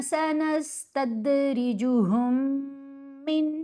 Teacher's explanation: یہ جو دو میم اکٹھی آ گئیں تو یہ میم ساکن کا ادغام ہے